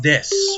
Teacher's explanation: when people say desu, it's usually just des. The u is silent.